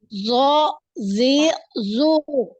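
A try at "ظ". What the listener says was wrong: Masih kurang tebal ya, masih kurang tebal. Nanti ditebalkan. Ini sudah naik, pangkal lidahnya naik, cuman belum itebaknya ya. Sifat itebaknya ini yang terkumpul suaranya ini ya. Jadi terkumpul ya, suara ini terkumpul dalam mulut. Naik pangkal lidahnya semua naik. Selain pangkal lidah, permukaan lidah naik semua.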